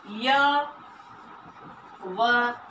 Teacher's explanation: इसके बोलने से मुख द्वार बहुत सकड़ा हो जाता है और इस और हवा स्वर की भांति बीच से निकल जाती है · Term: अर्ध स्वर